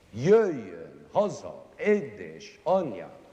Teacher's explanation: All the stresses belong at the beginning.